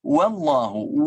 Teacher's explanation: Wa ini dari bibir bukan dari jauf. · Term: waw